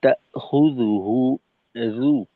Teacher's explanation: জিহ্বার আগা সামনের উপরের দুই দাঁতের আগার সঙ্গে লাগবে